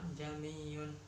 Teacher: hamzah yang pertama dibaca biasa dan hamzah yang kedua disuarakan di antara hamzah dan alif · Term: tasyil